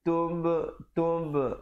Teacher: tub ada qalqalah di situ